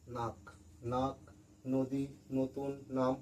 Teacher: যখন কোনো শব্দ, এটা একটা শব্দ, যেমন দেখো, এটা একটা শব্দ দন্তান্ন আকার ক, নাক। নাক যখন আমরা উচ্চারণ করছি, মানে বলছি, তখন দেখো আমাদের দাঁতের এই জিভটা, জিভের ডগা মানে মাথাটা একবার দেখো দাঁতে ঠেকছে। · প্রত্যেকবার এই দন্তন্য উচ্চারণ করার সময়, মানে বলার সময় জিভটা আমাদের দাঁতে ঠেকবেই ঠেকবে।